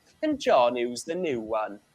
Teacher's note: people who speak with a Welsh accent will tend to drop the yeah sound the Y sound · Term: yod